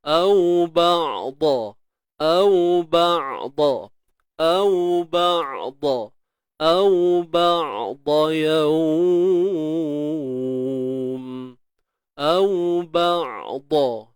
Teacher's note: ba' huruf ain jangan tahan, ba' tawassut. Suara yang tak tertahan, suara yang tak terlepas.